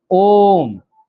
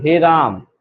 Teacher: जिसको उच्चारण करते समय हमको लगभग 3 मात्रा का हमको टाइम लगेगा, 3 मात्रा के हिसाब से समय लेंगे। जैसे आप लोगों को लिखा होगा ओम, पूरा शब्द बोलने के लिए, पूरा वर्ण बोलने के लिए ओम, या फिर हे राम, या फिर कोई किसी को आवाज दे रहे हो, जैसे राम ही बोलना है, राम, ऐसा भी हो सकता है। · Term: प्लुप्त स्वर